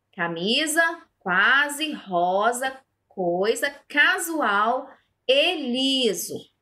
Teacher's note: palavras escritas com S, entre vogais, mas o som aqui buscado é o som de Z